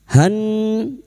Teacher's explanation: nun yang bertasdid ini kita dengungkan selama 3 harokat